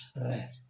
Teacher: रे व्यंजन को जैसे उच्चारित करते हैं अपन, तो अपने को महसूस हो जाएगा कि श्वास है वो जीभ के ऊपर लुढ़कता सा प्रतीत होता है